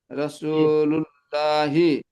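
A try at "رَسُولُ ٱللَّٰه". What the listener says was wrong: হি হবে না, রসু অফ করলে রাসূলুল্লাহ।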